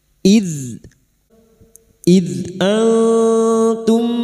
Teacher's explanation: Idz dzal sukun, hati-hati jangan dipantulkan, bukan qalqalah. Idz huruf dzal yang memiliki sifat jahar dan rokhawah, tertahannya nafas dan mengalirnya suara.